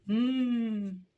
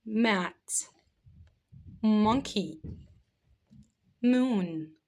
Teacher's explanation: Letter m has the sound of m. It's a bilabial consonant. Bilabial means by lips. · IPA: /m/